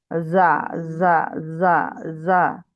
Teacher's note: একটু সিন মিশ্রিত যা হচ্ছে, জিহ্বাটা নিচের দাঁতে রাখতে হবে।